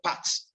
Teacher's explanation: that P has to be aspirated because it is initial plosive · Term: aspiration